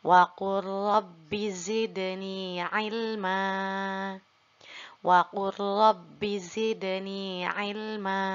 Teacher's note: Di sini sama idghamnya yaitu pada huruf lam yang berharokat sukun, setelahnya ada huruf ro. Kita leburkan huruf lamnya, lalu kita langsung baca pada huruf ro.